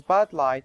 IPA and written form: bæd laɪt (bad light)